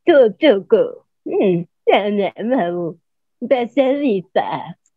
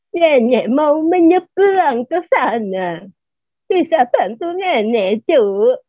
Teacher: suaranya digeterin kayak orang buyuten, kayak orang apa ya, bergetar gitu kan